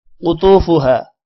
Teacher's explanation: قوف موٹا ہوگا طا بھی موٹا ہوگا طا کے بعد واو ہے تھوڑا سا لمبا بھی کرنا ہے